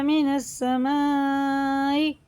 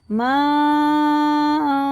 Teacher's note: مد متصل ہے، 4 الف کے برابر کھینچ کے پڑھیں گے 4 سے 5 تک